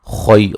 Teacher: خو کو موٹا ادا کریں گے، یہ لین ہے